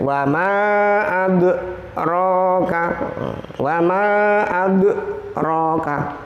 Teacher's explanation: Kemudian contoh qalqalah sughra huruf dal. Ya. Wa ma adraka, wa ma dalnya dibaca pantul.